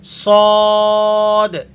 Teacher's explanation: आपने इसको पुर करके मोटा करके अदा करना है